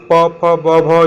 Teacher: ओष्ठ यानी कि जिसको बोलने के लिए ओठ की सहायता लेनी पड़ेगी। तो प फ ब भ ये सब पूरा जो है प वर्ग जो है आपका ओष्ठ हो गया।